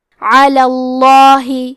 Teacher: ہم حرف اللام کو موٹی آواز میں پڑھیں گے